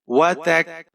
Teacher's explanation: تا کے اوپر زبر ہے، کاف ساکن ہے، تا کو کاف کے ساتھ ملائیں گے، کاف کو آپ نے باریک پڑھنا ہے۔